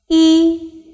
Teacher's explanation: English alphabet seven and make your mouth flat while pronouncing uh the mouth opens to a medium position the tongue remains half High towards the back and the lips are not rounded e the pronunciation of e is just like in the English